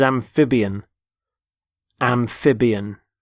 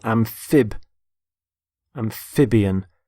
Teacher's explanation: notice the stress on the middle syllable